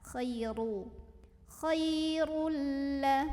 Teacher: maka bacanya tebal dengan cara mengangkat pangkal lidah kita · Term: tafkhim